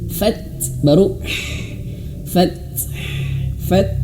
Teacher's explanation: ketika huruf ta dan ha cara bacanya huruf t-nya itu dianginkan dulu sedikit